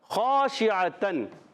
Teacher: خا کا مخرج اوپر والا، حلق کے اوپر والا حصہ